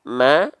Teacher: huruf mim ini adalah huruf yang tipis karena apa Karena tidak bervokalkan o tapi bervokalkan a